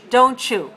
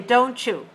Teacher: we usually put t and y together we sound ch